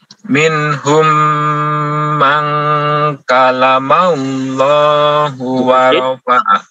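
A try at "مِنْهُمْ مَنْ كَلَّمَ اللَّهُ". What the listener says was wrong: Ada tasydid. Yukallimu.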